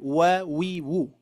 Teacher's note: karena huruf wa ini ketika diberikan harokat apapun ya, tetap mengawalinya itu dengan memonyongkan dua bibir.